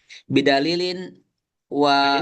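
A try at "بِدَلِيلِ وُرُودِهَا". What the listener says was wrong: Ini ya, mudah, jangan ditanwin. Bidalili wurudiha.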